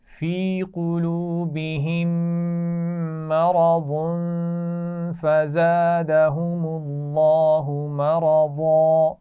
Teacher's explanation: میم ساکن کے بعد پھر میم آ گیا ہے، اس لیے یہاں پر ہم نے غنہ کیا. مرض، یہاں تنوین پر بھی غنہ ہوگا.